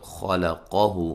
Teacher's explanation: ہو ایک الف کی مقدار کے برابر لمبا کریں گے · خا کو موٹا، قاف کو موٹا، لام کو باریک پڑھیں گے